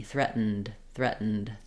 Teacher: th coming we're going right to the syllabic and threat so I stop the air make that n short and then I move to the D · We're going right to the syllabic N.